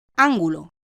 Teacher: La palabra ángulo, de 3 sílabas, es esdrújula porque tiene la fuerza de acentuación en la antepenúltima sílaba, es decir, la sílaba anterior a la penúltima, an.